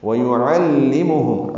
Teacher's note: عین وسط حلق سے ادا کریں گے اور لام سے ملائیں گے